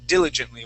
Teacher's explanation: diligently with the accent at the beginning